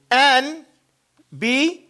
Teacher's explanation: the noon is not pronounced